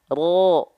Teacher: jadi ujung lidahnya dia enggak nempel ke langit-langit bentuknya seperti V karena yang nempelnya punggung lidahnya · huruf ro itu dilafalkan bukan dari ujung lidahnya banget tapi dari punggung lidahnya Nah makanya dia ujung lidah agak menurun ke bawah begini maka